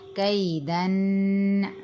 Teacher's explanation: غنہ کریں گے، ایک الف کے برابر ناک میں آواز لے کے جائیں گے